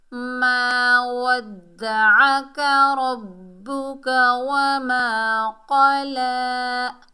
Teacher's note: अलिफ खाली से पहले ज़बर है, अलिफ मद्दा है, एक अलिफ की मिकदार खींच कर पढ़ेंगे।